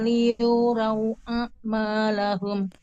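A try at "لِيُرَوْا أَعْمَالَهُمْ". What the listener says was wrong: Pertahankan huruf ro tebal. Liu row, tidak liu raw, tapi liu row.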